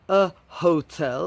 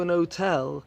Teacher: In normal, common British English, you should pronounce the H, a hotel.